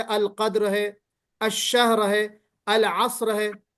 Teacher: इस रा को हम मोटा पढ़ेंगे कायदा नंबर 7 के तहत। रा साकिन, रा साकिन से पहले वाला हर्फ भी साकिन और उससे पहले जबर आ गया, जैसे अल कद्र है, अशहर है, अल असर है, तो उसी कायदे के तहत ये चीज आ रही खैर।